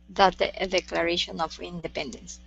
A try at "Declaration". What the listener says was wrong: Move your tongue back inside for that D sound instead of declaration. Declaration.